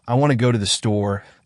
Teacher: in the sentence, I want to go to the store, the stressed words are want, go, and store, and the unstressed words like to and are pronounced more quickly or even reduced to almost nothing in fast speech.